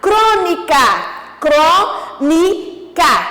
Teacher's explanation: Então, isso quer dizer que o Cro, de crônica, Cro, a antepenúltima sílaba é a mais forte, é a tônica. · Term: proparoxítona